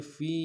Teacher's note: فا کو یا کے ساتھ ملانا ہے، یا مدہ ایک مقدار میں کھینچیں گے